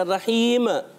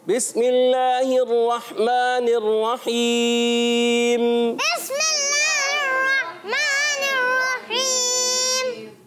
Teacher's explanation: मीम को हिलाना नहीं है क्योंकि मीम में कलकला हो जाएगा और हमने मीम में कलकला नहीं करना।